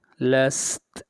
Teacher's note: تا کو ساکن کر دیں گے جب وقف ہوگا